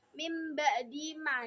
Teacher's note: Terus di sini ayat 35-nya itu ada ini aroni, ayat 35-nya di sini ada mim ba'di ma. Jadi mim ba'di ada nun sukun yang bertemu ba. Jadi termasuk bacaan iklab.